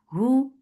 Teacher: for dhamma circle lips, the sound is short.